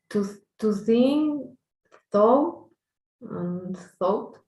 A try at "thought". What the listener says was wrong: Just make the T a little bit more noticeable, please, guys. Like thought, thought.